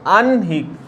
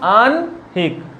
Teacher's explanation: হয়ের সঙ্গে যখন দন্তন্য বা মূর্ধন্য যুক্ত থাকে তখন এই যে নয়ের উচ্চারণ হয়ের থেকে আগে হয়। কিন্তু দেখো বানানের সময় কি হয়, বানানের সময় হটা হচ্ছে আগে লিখি কিন্তু উচ্চারণটা হটা পরে হবে।